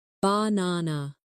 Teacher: For example, in the word banana, the stress is on the second syllable, banana. If you put the stress in the wrong place, it can sound strange, even if your pronunciation of the letters is correct.